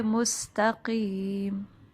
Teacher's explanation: پھر دیکھیں سین میں واضح سیٹی آنی چاہیے، تقیم، قاف جو ہے وہ زبان کی جڑ اور اوپر کے تالو سے ادائیگی اس کی ہوتی ہے